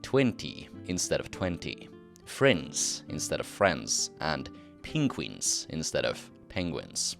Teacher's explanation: the short vowel e is raised to the long vowel e, especially before nasal consonants